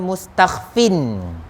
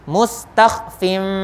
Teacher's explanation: Tuan-tuan kena baca mustakhfim. Tanwin bunyi nun asalnya, tukarkan kepada bunyi huruf mim. Tukarkan tu daripada huruf nun, bunyi nun, tukar kepada mim. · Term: iqlab